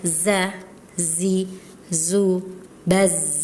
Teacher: zainya kurang safir tadi, kurang tebal ya.